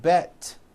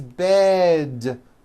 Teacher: good now also remember to add voicing towards with d endings bed has a voiced d ending it's not bet with an unvoiced t · Bed has a voiced D ending. It's not bet with an unvoiced T, it's bed with a voiced D.